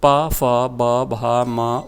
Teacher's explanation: इनका उच्चारण ओष्ठ से, होठों से होता है